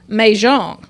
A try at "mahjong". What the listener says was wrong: And it sounds like you're putting a French twist on it with your country accent.